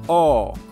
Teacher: suena como una u pero con la boca un poco más abierta · esta de aquí suena como una O pero con la boca un poco más abierta